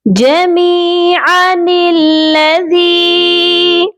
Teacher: آئین کو کھینچنے کی آپ نے غلطی نہیں کرنی، اور اس نون کو لام مشدد کے ساتھ ملا کر پڑھیں گے